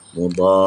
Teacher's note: bila huruf ra ni kita kena sedikit tekan suara kita lah untuk kita jelaskan bahawa di sana ada dua huruf ra